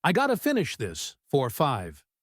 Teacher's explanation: When spoken quickly, it becomes, I gotta finish this for 5. Notice how I've got to becomes I gotta, and before is shortened to for. Everything flows together.